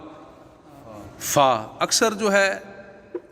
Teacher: فا جو ہے فا با میم واو، ان کو حروف شفویہ بھی کہتے ہیں کیونکہ ان کا تعلق ہونٹوں سے ہے، ٹھیک ہے جی۔ اوپر کے دانتوں کے کنارے اور نچلے ہونٹ کے تر حصہ سے کیا ادا ہوگا؟